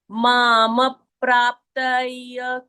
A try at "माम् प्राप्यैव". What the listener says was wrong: प्राप के आगे प्राप्त बोलो ना, प्राप्त नहीं बोलना है, प्राप्त नहीं है, प्राप्य, प्राप्यैव, यैव, माम प्राप्यैव